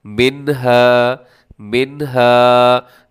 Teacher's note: نون کو ظاہر کرنا ہے، اس کو آواز کو ناک میں نہیں لے کے جانا، یہاں پر غنہ نہیں کرنا آپ نے